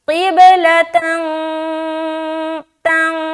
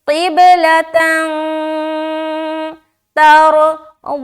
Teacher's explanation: ठीक है, क़िब क्या पढ़ेंगे, क़िब क़िब क़िब, ला तंग तंग, क्योंकि दो ज़बर की तनवीन के बाद हर्फ ता आ रहा है तो यहाँ पर हम इख्फा करेंगे, क़िबलतन तंग, नाक में नून की आवाज़ को छुपाएंगे जो कहलाती है इख्फा करना।